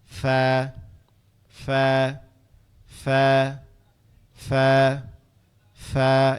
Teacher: ফাটা আমাদের জিহ্বার আগা, জিহ্বার পেট, নিচের জিহ্বার পেট, উপরের দুই দাঁতের আগা নিচের জিহ্বার পেটের সাথে, এই যে ঠোঁটের পেট, নিচের ঠোঁটের পেটের সাথে কি হবে? উপরের দুই দাঁত লাগবে, লেগে উচ্চারিত হবে ফা